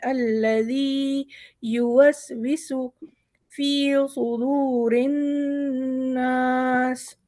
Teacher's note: سین پہ ہماری وہی سیٹی کی آواز نکلے گی، نارمل نکلے گا، صاد نکالنے کی بالکل بھی ضرورت نہیں ہے